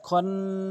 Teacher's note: নুন আলিফ জবর না, এক আলিফ টানবেন এবং গুন্না করবেন, ওয়াজিব গুন্না, এবং ওয়াকফ করার সময় 3 আলিফ টানবেন।